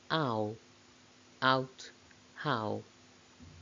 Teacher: Owl begins with an open vowel between front and back, and it glides towards the U, although it doesn't actually reach the U, and there's some slight lip rounding to produce this diphthong. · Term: closing diphthongs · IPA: aʊ